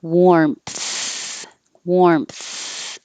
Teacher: assessment relaxation relaxation and 13 14 15 13 is warm so after you make your m you have to open your lips more to make the tongue come out between the teeth for the th and keep the airflow going